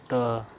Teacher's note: ट मूर्धन्य अल्प प्राण अघोष व्यंजन है।